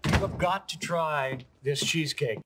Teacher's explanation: Notice that the H is almost undetectable.